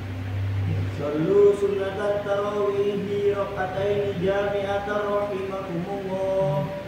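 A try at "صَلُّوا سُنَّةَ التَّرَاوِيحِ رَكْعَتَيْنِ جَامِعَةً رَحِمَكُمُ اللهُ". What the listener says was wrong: Sallu tasdidnya jangan lupa.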